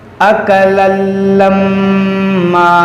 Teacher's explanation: یہاں پر تنوین کے بعد لام ہے، یہاں پر ادغام ہوگا